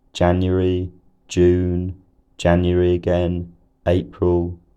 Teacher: keeps a fairly level pitch